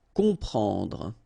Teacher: You've got OM, and after that you've got a consonant, so you will get the sound on, nasal, okay? You don't hear any M here